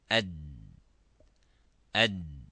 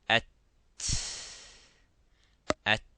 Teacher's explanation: if we pronounce the dal, it stops completely.